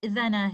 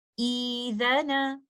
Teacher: ہم حمزۃ الوصل سے کریں گے تو بعد میں آنے والے ساکن لیٹر حمزہ کو مد لیٹر میں بدلتے ہوئے مد البدل کے 2 کاؤنٹس کے ساتھ سٹریچ کرتے ہوئے ہم اس لفظ کی ادائیگی اس طرح سے کریں گے